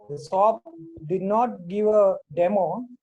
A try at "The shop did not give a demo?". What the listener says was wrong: Again, rising tone, you're asking. The shop didn't give a demo. The shop did not give a demo. Ask, rising tone.